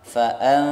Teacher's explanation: bibirnya tidak kebuka dan tidak tertutup, jadi antara izhar dan ghunnah. Kalau dibaca fa'an keliru atau dibaca fa'am keliru, yang benar fa'an tidak tertutup dan tidak terbuka. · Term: ikhfa